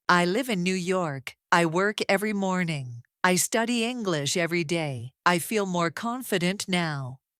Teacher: Did you hear the downward curve at the end? Let your voice drop naturally almost like a smooth slide down. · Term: falling tone